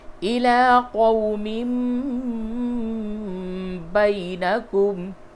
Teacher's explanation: تو نون ساکن اور تنوین کے بعد جب بھی با آوے تو نون ساکن اور تنوین کی آواز کو میم سے بدل کے پڑھتے ہیں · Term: قلب